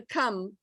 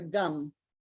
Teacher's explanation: if they don't aspirate the cum, we'll hear gum